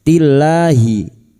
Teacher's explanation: lam jalalah yang didahului kasrah dibaca tarkik